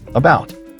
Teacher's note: The first syllable is schwa.